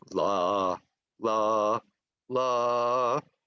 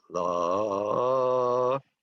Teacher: staccato in music is when you go la, la, la, okay? Legato is when you go la, and the notes are connected